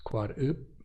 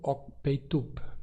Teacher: as três oclusivas PTK, em final de morfema, se pronunciam sem plosão. Então temos Quarup, que é a árvore do sol ou a festa do Quarup, com um P não explodido.